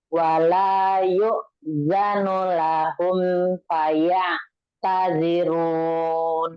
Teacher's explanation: Yang di depan yuk zanu itu pakai hamzah, bukan ain.